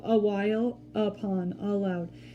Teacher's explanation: it starts with the same schwa sound